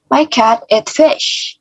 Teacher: jadi fish kita lebih tinggi dan I-nya, vowel-nya kita tekankan. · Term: focus word